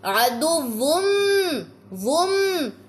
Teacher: میم کی آپ کو یہاں پہ ساؤنڈ محسوس ہو گی نا کہ نون کی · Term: ادغام مع الغنة